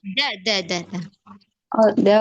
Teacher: ujung lidah bertemu dengan gigi seri atas. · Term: huruf dal